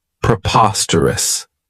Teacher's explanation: This adjective has four syllables and the stress is on that second syllable